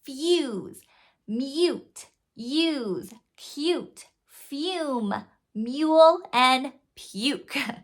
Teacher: when it's long vowel U that sounds like U, that's actually a diphthong